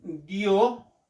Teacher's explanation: la unión de alguna vocal abierta y una vocal cerrada estas dos se van a pronunciar en un golpe de voz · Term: diptongo